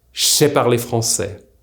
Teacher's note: JJ and SS are now linked and make the sound CH.